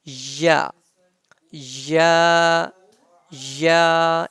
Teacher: the point of pronunciation is middle of the tongue and middle of the palette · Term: ya